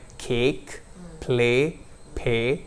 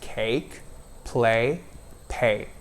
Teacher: it's never a flat vowel like cake, play, pay. It's always cake, play, pay. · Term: diphthong